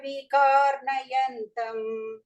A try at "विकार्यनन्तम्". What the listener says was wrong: நயந்தம் இல்ல யனந்தம் विकार्यनन्तम्